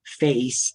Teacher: And then over the course of that vowel, you change the way that you're producing it to a different vowel. So when I say the vowel face, I start with a, and then I move to an E sound. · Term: diphthong